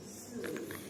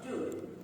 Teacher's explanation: Voiceless would be Sue. Voiceless. With voice, do.